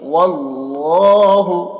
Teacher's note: اللہ کے لام سے پہلے زبر ہے تو اللہ کا لام کو پر پڑھیں گے